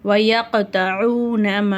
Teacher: வயக்தஊன இந்த இடத்துல பெரிய மத் இருக்கிறதுனால நம்ம 5லேருந்து 7 அலிஃப் வரைக்கும் நல்லா நீட்டி ஓதணும்.